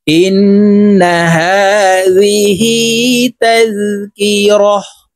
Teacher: ওয়াকফের ক্ষেত্রে হার উচ্চারণ করব এবং হাকে সাকিন করে ফেলব